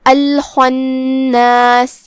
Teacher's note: الخناس، جو کہ نون پہ تشدید ہے تو 2 حرف کے برابر ہمیں نون کو پڑھنا ہے۔